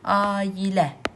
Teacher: A və i saitlərinin ortasına y səsi əlavə oldu. · Tələffüz zamanı bu iki saitin ortasına y səsi əlavə olunur. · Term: y səsinin əlavə olunması